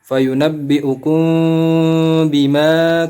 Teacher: maka huruf mim sukun dibaca dengan eh samar-samar dan didengungkan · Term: ikhfa syafawi